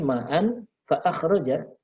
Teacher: Nah, ini tanda ikhfa. Jadi hanya dibaca samar dan dengung. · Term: ikhfa hakiki